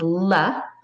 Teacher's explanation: the l sound the tongue tip goes up to the bumpy part same spot air passes over the sides of your tongue not through your nose